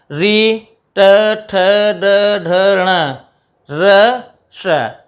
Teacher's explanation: जिह्वा हमारी तालु से आगे और दांत से पीछे मूर्धा स्थान पे स्पर्श करेगी। री, ट, ठ, ड, ढ, ण, र, श, इसका उच्चारण स्थान हो गया मूर्धा।